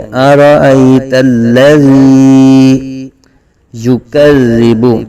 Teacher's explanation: یا کو زبان کے درمیان اور تالو کے درمیان سے نکالیں گے